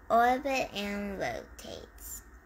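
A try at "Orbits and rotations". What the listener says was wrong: Orbits. Don't forget your S's. Orbits. Rotations.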